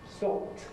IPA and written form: stɒpt (stopped)